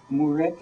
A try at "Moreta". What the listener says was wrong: Moreta. With an O. Moreta.